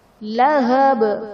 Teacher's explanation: لہب میں با وقف کی صورت میں ساکن ہو جائے گا تو یہاں پر ہم قلقلہ خوب ظاہر کریں گے